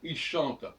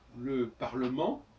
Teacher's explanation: quand je dis il chante, je ne prononce pas le ENT, et quand je dis le Parlement, je prononce le ENT